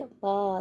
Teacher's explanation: जो स्वर दोनों होठों को स्पर्श करते हुए, तो वाह बोल के देखिए, वाह, दोनों होठ आपके आपस से मिलेंगे